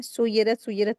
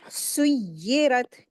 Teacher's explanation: जबकि या के ऊपर शद लगी है। या को दो मर्तबा पढ़ेंगे। एक या को सीन से मिलाकर पढ़ते हैं।